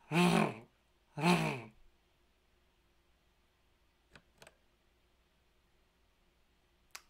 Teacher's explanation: The letter R represents a voiced alveolar trill, pronounced rrr, rrr.